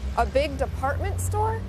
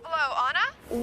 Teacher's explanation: did that thing again with raising her voice at the end of a sentence to make sure she understood about the department store